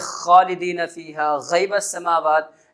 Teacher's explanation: غین اور خا کا مخرج ہے، یہ وہ حروف ہے جو حلق کے اوپری حصے سے ادا ہوتے ہیں